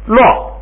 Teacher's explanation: 后边跟那个后夹字卡啪撒是把调摁下来，所以1声就变成4声了